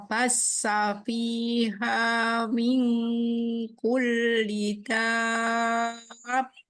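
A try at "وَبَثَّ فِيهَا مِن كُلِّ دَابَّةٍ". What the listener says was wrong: Baru 4 harokat, masih salah. Kan harus berapa? 6, masih belum nyampe.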